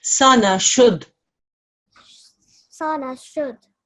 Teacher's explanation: There's a dal mushaddad. Okay. We still touch on the dal here.